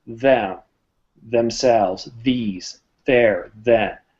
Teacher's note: they have a slight vibration when we say these words them themselves these they're then bit of vibration but when we